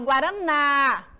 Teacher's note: Qual é a sílaba tônica professora é a mais forte e aqui ela tá na última e ela é oxítona